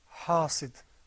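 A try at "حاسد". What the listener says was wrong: Well, no, try to pull the corners of your mouth back. Now, there's sometimes a tendency for people to say hasid like that, but that's not correct because the ha sound is not one of the letters of tafkhim. It's one of the letters of tarqiq.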